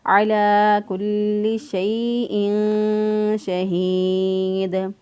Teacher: علی کل شیء شہید، تنوین کے بعد جب نہ حرف یرملون ہو، نہ با ہو اور نہ ہی حروف حلقہ میں سے کوئی حرف ہو، تو اس وقت ہم اخفا کرتے ہیں، تنوین کی آواز کو پوشیدہ رکھتے ہوئے ادا کریں گے